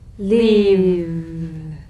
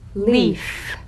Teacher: If you don't have enough vibration in your V's, they'll end up sounding like the F because they're exactly the same. One has vocal cord vibration, the other is unvoiced.